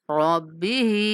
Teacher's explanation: را کو موٹا اور ہا کو کھینچ کے پڑھنا ہے